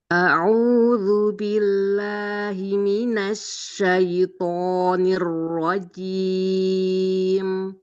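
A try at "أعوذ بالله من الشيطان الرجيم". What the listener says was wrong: Masih bi, tahan nafasnya bi, bi.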